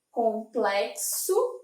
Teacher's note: Complexo, então aqui eu teria um K e um S.